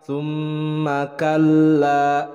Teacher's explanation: lamnya bertasydid kemudian dibaca panjang karena maud tabi'i.